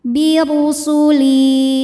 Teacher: Huruf ra dibunyikan secara tafkhim sebab berbaris dhammah, maka huruf ra ditebalkan. Birusuli. Li dihukumi mad tabi'i zahiri ya, karena ada ya sukun didahului kasrah, maka lam panjang 2 harokat.